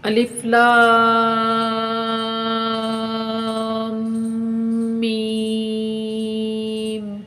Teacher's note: الف اور میم کے اوپر جو مد ہے یہ مد متصل اور واجب ہے، اس کو 5 الف کے برابر کھینچ کر پڑھتے ہیں۔ ایک مٹھی کو بند کر لیجئے، اس کو کھولنے یا بند کرنے میں جتنا ٹائم لگتا ہے وہی مقدار 1 الف کی ہوتی ہے، تو آپ نے یہاں 5 الف کے برابر لام کو کھینچنا ہے۔ · جب آپ اس کے اوپر رکیں گے تو آپ کو اپنی آواز ناک سے آتی ہوئی محسوس ہوگی، اسی کو غنہ کہتے ہیں۔ اور غنہ 1 الف کے برابر رک کر کریں گے۔